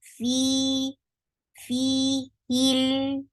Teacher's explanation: attach with lam, and lam will get sifa of tawassut.